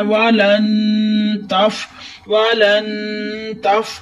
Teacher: نون ساکن کے بعد تا آیا تو تا حروف اخفا میں سے ہے، یہاں گنہ ہوگا، ناک میں آواز لے جا کر آپ نے گنہ کرنا ہے